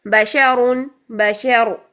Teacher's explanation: را ضاد دونوں کا موٹے کا خیال رکھنا ہے، بشر بشر، یہاں پر را ساکن حالت میں بھی موٹی ہی پڑی جائے گی، اس کے پیچھے زبر ہے